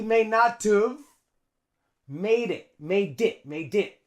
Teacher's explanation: the D and the I link